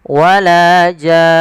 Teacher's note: panjangkan dulu jannya 6 harokat, kemudian masukkan nun dan ditahan baru dimatikan nunnya. Maka wala jan tidak wala jan enggak. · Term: mad lazim kalimi mukhaffaf